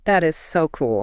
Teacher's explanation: Let your voice just ride high on that excitement. · You need to put strong physical energy on the word so. You push a lot of air out on that word to show your excitement.